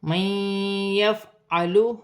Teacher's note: نون ساکن کے بعد یا مشدد آ رہی ہے، نون ساکن میں غنہ بھی کیا جائے گا، ملا کر بھی پڑھا جائے گا